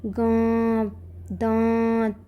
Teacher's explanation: अनुनासिक ऐसे स्वरों का उच्चारण नाक और मुंह दोनों से होता है और उच्चारण में लघुता रहती है